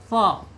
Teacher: th ini huruf tebal ya huruf isti'la. Kenapa bisa tebal? Karena lidahnya terangkat gitu.